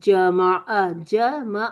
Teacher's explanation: عین کی آواز ون کاؤنٹ وسط الحلق، ٹھیک ہے، وسط الحلق سے آ ون گئی، کاؤنٹ ٹھیک ہے۔